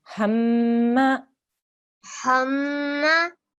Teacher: holding on that meme sound, pushing down on it for 2 seconds, and we're emitting a sound from our nasal pipe, okay, our nose pipe.